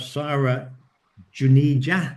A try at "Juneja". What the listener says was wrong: You have to pronounce the J.